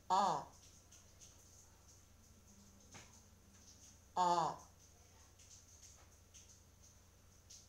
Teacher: 모음 어는 혀의 위치를 아에 비해 조금 높게 하고 뒤로 움직여 발음합니다. 아와 마찬가지로 입술 모양은 평평하게 만들고 이때 입을 크게 벌려서 소리를 냅니다.